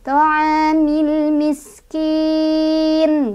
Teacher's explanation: Bertemu dengan huruf yang disukunkan yaitu nun. Bacanya dipanjangkan boleh 2, boleh 4, boleh 6.